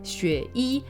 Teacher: Like everyone just goes xueyi. So you kind of go low, high, xueyi. The only difference is the E doesn't go yi, right?